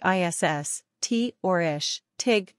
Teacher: like ISS t or ish TIG depending on the regional accent use a hard S as in SAS or an sh sound as in shoot not a soft s z sound as in glaze